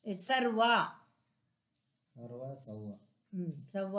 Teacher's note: ಸರ್ವ ಸವ್ವ ಸವ್ವ ಅಂದ್ರೆ ಎರಡು ಒಂದೇ ವರ್ಗದ್ದು ವ ಮತ್ತು ರ ಆದ್ರೆ ಸರ್ವ ರ ಹೇಳ್ಬಿಟ್ಟು ವ ಹೇಳೋದ್ರಿಂದ ಇಲ್ಲಿ ಎರಡನೇದು ದ್ವಿತ್ವ ಆಗುತ್ತೆ